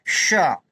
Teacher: शाह में सीटी बजनी चाहिए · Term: ऊष्म व्यंजन